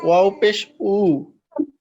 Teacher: ওয়াও ফেশ উ, অর্থাৎ দুই ঠোঁটকে গোল করে ওখান থেকে আওয়াজটাকে আপনি ছেড়ে দিবেন।